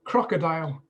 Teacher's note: crocodile three syllables stress on the first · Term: word stress